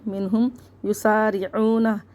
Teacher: عین کو حلق سے نکال کے پڑھیں گے